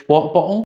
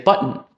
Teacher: For example, the stereotypical British bottle, or in my North American accent, I would say button. Both of those are using a glottal stop to replace a T.